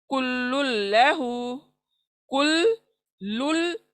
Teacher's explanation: Next कुल्लुल्लहु, कुल्लुल्लहु, तो यहाँ पर भी हम मिला रहे हैं, अदरवाइज वो क्या है, कुल्लुन है एक और लहू एक है। तो हम लुन को, नून को छोड़कर लाम पे मिला रहे हैं, इसलिए इसको लुन का नून का आवाज नहीं आएगा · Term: लाम का इदगाम